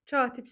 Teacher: Katib sözündə də vurğu birdə yox, ikinci i-nin üzərində olmuş olacaq.